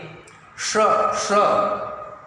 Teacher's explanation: स तीनों स में अंतर है। ये इस स का उच्चारण जो तालव्य स है, जिह्वा तालु के पास जाना चाहिए